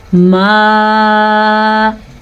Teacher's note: تقریباً اس کی مقدار 2 سے 3 سیکنڈ کے درمیان بنتی ہے اور اس مد کو ہم کہہ سکتے ہیں 3 حرکات عربیہ کے برابر ہے یا 2.5 سے 3 الفاظ کے برابر ہے.